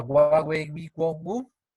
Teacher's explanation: Finalmente tenemos una aproximante que es la W